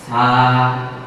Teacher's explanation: এই হরফটি জিহ্বার আগা সামনের উপরে দুই দাঁতের আগার সঙ্গে লাগিয়ে উচ্চারিত হবে।